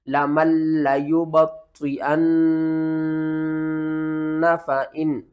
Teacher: لام کو 2 بار پڑھیں گے، سختی کے ساتھ پڑھیں گے